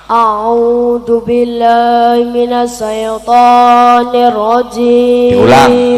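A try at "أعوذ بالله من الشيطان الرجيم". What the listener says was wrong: Ojo sae, shin ya sukun fathah syai bukan sae. Syai.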